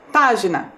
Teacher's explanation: A sílaba mais forte também é a antepenúltima, a sílaba pá